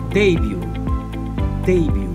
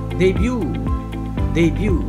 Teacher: in british english the word would be stressed on the first syllable